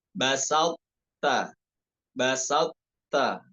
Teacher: Basalta ya, basalta. Idghamnya bukan kamil, namun naqis. Tetap ada tafkhim huruf to-nya. · Idgham naqis ya, bukan idgham kamil. Tetap ada sifat itbaqnya pada huruf to.